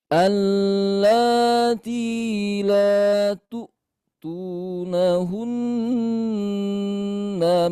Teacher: ketika Bunda mewakafkan nun bertasydid, maka tahan lebih lama ya.